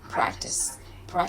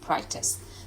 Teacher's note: When you say practice them every day, keep the practice stress on the first syllable, so it sounds like practice them every day.